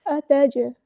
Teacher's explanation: اتجعل، حمزہ باریک ادا کرنا ہے، حمزہ کی آواز کو واضح کر کے آ۔ اتج، جیم کی آواز میں قلقلہ آئے گا، یہاں پہ جیم ساکن ہے تو قلقلہ ہوگا